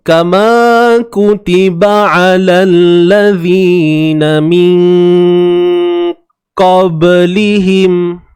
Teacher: Contoh kesilapan, saya mengurangkan martabat dengung tu. Saya lowkan dia punya kadar tu. Saya lemahkan dia.